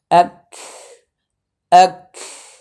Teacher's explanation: কাফের উপরে যখন জজম হবে তখন আওয়াজের শেষে পিছনে একটি বাতাস আসবে